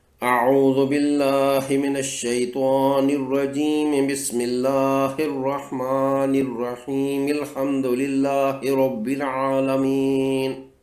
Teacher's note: تسمیہ کی آخری میم کی زیر کو الحمدللہ کے لام سے ملانا ہوگا